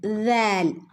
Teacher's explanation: ലാലിൻ്റെ ശബ്ദം വരുന്നത് നാവിൻ്റെ അറ്റവും മേലെ മുൻപല്ലുകളുടെ അറ്റവും. · നാവിന്റെ അറ്റം എവിടെയാ തട്ടുന്നത് മേലെ ഉള്ള മുൻ പല്ലുകളുടെ അറ്റത്താണ് തട്ടുന്നത്